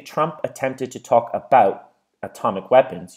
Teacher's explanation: that's when we say trump attempted to talk about atomic weapons you can hear at the end that your throat closes up and that is the definition of glottal reinforcement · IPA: [trʌmp əˈtemptɪd tə ˈtɔːk əˈbaʊʔt əˈtɒmɪk ˈwepənz]